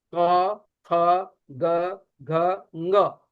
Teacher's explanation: क, ख, ग, घ, ङ, इन सब का उच्चारण कंठ से होता है